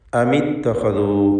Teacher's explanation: സാക്കിനത്തായ മീമിൻ്റെ സുക്കൂൻ ഇൽത്തിഖാ സാക്കിനൈൻ്റെ പരിഹാരത്തിന് വേണ്ടി കസ്ർ നൽകി ഹറക്കത്ത് തഹ്രീക്ക് എന്ന പരിഹാര മാർഗം സ്വീകരിച്ചുകൊണ്ട് അമിത്തഖദു എന്ന് ചേർത്ത് വായിക്കുകയാണ്. എന്ന സാക്കിനത്തായ മീമിൻ്റെ സുക്കൂനും ഇത്തഖദു എന്നതിലെ ഹംസത്തുൽ വസ്ല് ചേർത്ത് വായനയിൽ സ്വാഭാവികമായും കളയപ്പെടുമ്പോൾ ശേഷിക്കുന്ന താഇൻ്റെ സുക്കൂനും, ഈ രണ്ട് സുക്കൂനുകൾ ചേർന്ന് വന്നതാണ് ഇതിനുള്ള കാരണം.